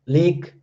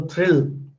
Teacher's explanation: And if it is leak, then it is clear la, leak. So word initially, letter or sound la is clear, and word end, word finally, it is dark